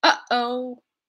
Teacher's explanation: Oh, that pinch, that is pinching your glottis closed, creating a seal between your lungs and the outside air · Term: glottal stop